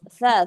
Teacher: Ujung lidah ketemu gigi seri atas.